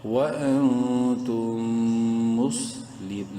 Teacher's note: نون ساکن کے بعد تا حلقی میں سے نہیں ہے، اخفا کریں گے · میم ساکن کے بعد میم ہے مشدد ہے غنہ کریں گے